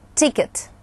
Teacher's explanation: краткий звук «и», встречается и в ударном, и в безударном слоге данного слова